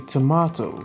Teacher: in british i'd say tomato and it has the stress sound on the second syllable as well